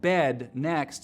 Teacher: trap moving up higher pushes the dress vowel back in the mouth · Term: chain shift